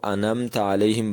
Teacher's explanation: عین کو اتنا ہلکا کرتے ہیں کہ یوں لگتا ہے کہ جیسے یہ عین نہیں پڑھ رہا